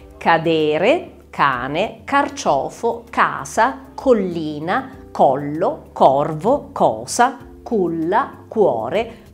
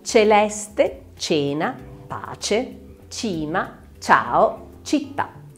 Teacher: un suono duro o gutturale oppure un suono dolce detto anche palatale